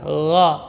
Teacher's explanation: Huruf gha, rakhawah dan jahar. Min adnal halqi, ujung tenggorokan.